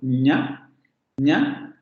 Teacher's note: La lengua va a subir al paladar, principalmente la parte delantera y del dorso de la lengua sube al paladar, ahí es donde se produce el cierre de la cavidad oral. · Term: Fonema palatal nasal sonoro